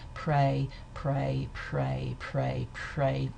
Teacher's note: So in some ways we can consider that what's going on here is the same process. We've got delayed voicing because this is a voiceless plosive consonant, which we'd expect normally to be aspirated. But instead of having a vowel here, we've got an intervening approximant consonant.